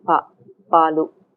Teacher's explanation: Next level, you have voiceless unaspirated plosives. We also say pa without aspiration